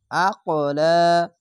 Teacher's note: কলকলা ধাক্কা মেরে হবে, ওপরে সাউন্ড যাবে